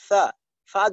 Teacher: আপনি হরফ মাখরাজ থেকে যখন হরফটা আদায় করবেন, এইটার জন্য বাতাস বের করার জন্য আপনার কষ্ট করতে হবে না, বাতাসটা আপনি চাইলেই বের হবে। যেমন ফা, ফা যখন উচ্চারণ করবেন বাতাসটা অটোমেটিকলি বের হবে